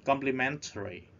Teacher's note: Complimentary ta nhấn vần 3. The third syllable.